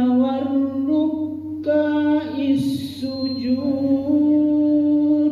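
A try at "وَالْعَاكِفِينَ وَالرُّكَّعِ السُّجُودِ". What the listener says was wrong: K-nya pendek ya, Pak ya.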